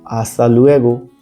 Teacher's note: ध्यान रखें कि इसमें एच का उच्चारण नहीं होता